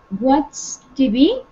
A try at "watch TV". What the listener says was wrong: correct, yes.